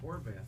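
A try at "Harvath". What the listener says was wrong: Yes, It's Harbath, not Horvath. H-A-R, not H-O-R.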